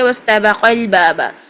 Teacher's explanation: قاف کی زبر کے ساتھ لام کو ملا دیں گے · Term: حذف کا قاعدہ